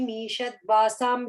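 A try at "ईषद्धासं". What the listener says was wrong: the first line, Devim Isha Dhasam. I'm hearing dwa. I'm hearing a v sound coming there. Just dasam. Isha Dhasam.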